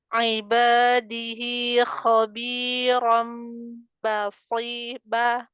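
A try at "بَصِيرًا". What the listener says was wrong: Belum naik itu pangkal lidahnya. Shortnya tetap harus tebal.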